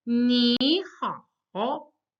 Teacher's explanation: When you have two third tones together, you can't say ni hao. It's simply that the first third tone becomes the second tone.